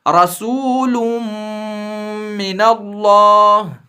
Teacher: تو ادغام میم کا مطلب ہے کہ جہاں بھی تنوین یا نون ساکن کے بعد حروف یرملون میں سے میم آ جائے تو وہاں تنوین یا نون ساکن میں جو نون کی آواز ہے اس کو میم کی آواز میں داخل کرنا ہے اور گنہ کے ساتھ ملا کر پڑھنا ہے